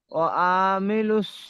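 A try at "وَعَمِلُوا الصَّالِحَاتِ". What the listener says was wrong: ওয়া আইন টান দিচ্ছেন, আইন টান হবে না। ওয়ামিলুস। ওয়া আইন টান হবে না, যে একটু ওয়ামিলুস।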